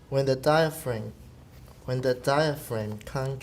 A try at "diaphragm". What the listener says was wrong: Not frame, fram.